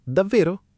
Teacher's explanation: Con il tono che sale è una domanda curiosa.